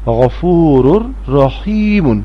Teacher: تنوین کے بعد جب را آ جائے گی تو تنوین کی آواز نہیں آئے گی بلکہ را کو را سے ملا کے پڑھیں گے